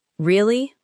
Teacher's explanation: You could say, Really? with a calm, falling tone to show that you are processing the news.